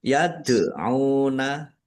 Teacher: Yad'una dal sukun bacaan kolkolah dibaca memantul. Yad'una ain domah wawu sukun mat tobi'i panjang 2 harokat.